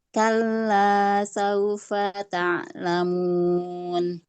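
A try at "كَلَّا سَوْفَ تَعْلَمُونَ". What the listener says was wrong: Kalla sawfa ta'lamun. Ta'lamun. Ainnya lebih ditajamkan. Kalla sawfa ta'lamun.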